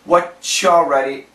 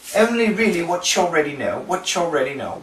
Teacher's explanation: T plus Y, we get that ch.